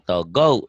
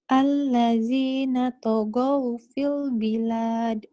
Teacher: Jadi W-nya berasa. Nggak panjang tapi ada bersisa. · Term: lin